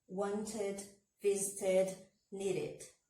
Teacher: No caso de want e need, wanted and needed, toda vez que os verbos terminarem em T ou D, o som no passado vai ser como id